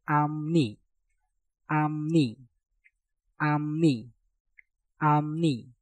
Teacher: Maka piupnya kita rubah menjadi suara mieum.